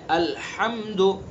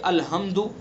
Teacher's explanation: الحمد بڑی ہاں ہے، ہمیں یہاں اس ہاں کو درمیانی حلق سے نکالنا ہے